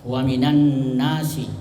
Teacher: Jadi an-nas itu idgham syamsiyah. Idgham itu artinya dimasukkan. Ya, syamsiyah itu adalah huruf yang datang sesudah lam, makanya lamnya disebut syamsiyah, dan huruf sesudah lam itu huruf syamsiyah.